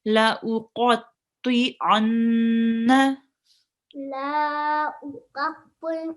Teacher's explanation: remember to sit on the noon here and do a ghunna, because it is noon mushaddad. So whenever there is a shad on the noon or a meme, you would do a ghunna and sit on it for 2 seconds.